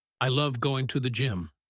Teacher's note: If they say it like this, I love going to the gym, but with a long pause, they are building suspense.